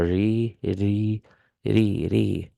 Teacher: kasra on ra under ra is going to be light. Ri, not re, not ri, ri, ri, ra, ri, ru, ra, ri, ru.